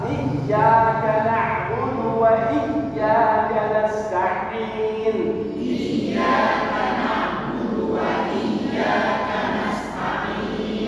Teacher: Iyyaka ini ada tasydid lagi, tekan huruf ya.